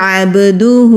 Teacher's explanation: با کی آواز بھی پلٹ کر آتی ہے جب با ساکن ہوتا ہے تو اس کو قلقلہ کہتے ہیں